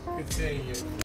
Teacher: That's a falling intonation and expresses confidence and certainty.